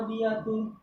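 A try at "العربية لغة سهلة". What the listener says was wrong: Al Diulangi, al-arabiyatu. Nah, enggak boleh ditanwin, ada alnya ya. Al-arabiyatu.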